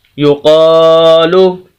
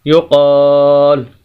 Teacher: یہ الف مدہ ہے کہ ایسا الف جس کے پچھلے لفظ کے اوپر زبر آ جائے الف مدہ کہلاتا ہے، اس کو لمبا کریں گے۔ یقالو، آخری حرف جو لام ہے ہم اس کو ساکن کر دیں گے اور اس کی پیش کو ختم کر دیں گے تو وقف ہوگا یقال۔